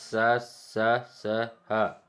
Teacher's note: ऊष्म व्यंजन, जिनका उच्चारण एक प्रकार की रगड़ या घर्षण से होता है।